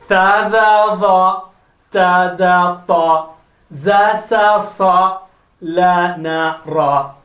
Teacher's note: Next 12 letters are from the tongue tip.